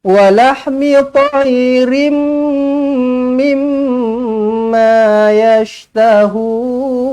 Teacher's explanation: Maka wajibul gunnah ke idgham ma'al gunnah ke idgham mislain ke sama je, semuanya kena dirapatkan bibir, dengungkan dengan dua harakat. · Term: mim sabdu